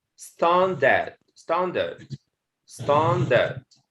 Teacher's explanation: The stress at the first syllable